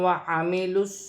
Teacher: لام ساکن ہے، لام کو واو کے ساتھ ملا کر پڑھا جائے گا